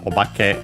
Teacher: Obake accented on the ba